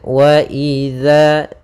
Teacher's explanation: ujung lidah kita menempel dengan gigi di atas